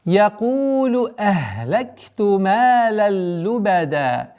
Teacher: Якулу, долгота в размере двух огласовок даммы.